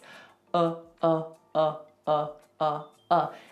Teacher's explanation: it's just neutral nothing happens with the mouth nothing happens with the tongue